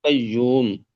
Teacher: قاف حروف مستعلیہ میں سے ہے تو اس کو پر پڑھیں گے